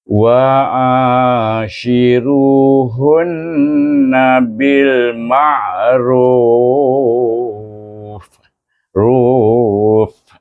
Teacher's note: Iaitu bibir kita pergi penghabisan, bibir kita pergi pada gigi kacip.